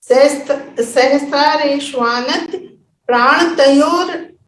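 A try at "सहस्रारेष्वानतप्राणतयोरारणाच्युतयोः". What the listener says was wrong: प्राणत योरार, योरा है देखो,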